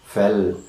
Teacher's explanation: the tip and the front of the tongue is against the alveolar ridge, or rather the roof of the mouth, air escaping through the sides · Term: lateral sounds